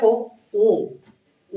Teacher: ও বললে মুখটা আরেকটু কম খুলতেছে ঠোটটা একটু কম খুলতেছে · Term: অর্ধ সংবৃত